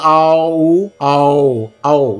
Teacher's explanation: Au is also a Mishra Swara, which is a combination of A and U, both long.